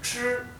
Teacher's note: Recuerden que el primer tono, que es la línea horizontal, es el tono alto